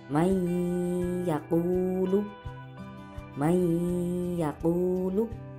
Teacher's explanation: Suara nun mati dileburkan kepada ya, sehingga nunnya ini tidak terbaca. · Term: idgham bi gunnah